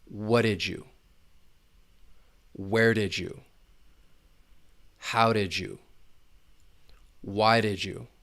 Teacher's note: Assimilation may occur in order to connect did and you because the final D sound may blend together with the beginning Y sound in you and it's going to sound a little like J. It's almost like we're taking a J and we're putting it in between those two words. It's not something you need to force.